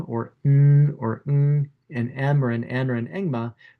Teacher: the sound goes through your nose